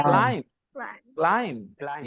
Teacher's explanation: the correct pronunciation is climb without a b sound the B at the end is silent